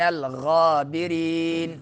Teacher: غابرین را باریک پڑھیں گے اور یا جو ہے مدہ ہوگا